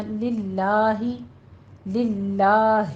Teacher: اسم جلالہ کو ہم باریک پڑھیں گے